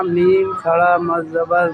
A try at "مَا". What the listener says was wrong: نہیں میم کھڑا زبر ماں،